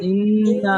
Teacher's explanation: না টান দিয়ে যাবে না, হরকতের উচ্চারণ তাড়াতাড়ি পড়তে হয়। না না না বলেন না, ইন্না।